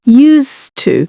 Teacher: We also don't really pronounce the d much